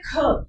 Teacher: तो ख आप बोलोगे तो ज्यादा जोर लग रहा है। ज्यादा संघर्ष। ठीक है? तो करते समय ज्यादा हवा निकल रही है। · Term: महाप्राण